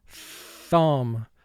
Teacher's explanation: the first sound of th is called the voiceless sound because we do not vibrate our vocal chords to make that sound